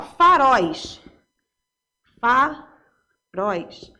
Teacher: Porque terminou em ditongo aberto e é oxítona, tá? A última sílaba é pronunciada com mais força.